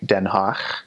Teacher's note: Dutch does have a guttural in it. It has a guttural G.